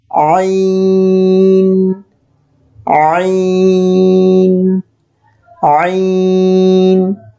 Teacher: আইন উচ্চারণের নিয়মটি হলো কণ্ঠনালীর মধ্যভাগ হতে নির্গত হয়